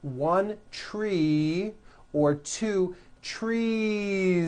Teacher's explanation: you continue the voicing throughout the whole word and add on a voiced Z.